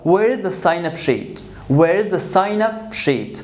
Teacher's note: as a noun I'm going to stretch the first word which is sign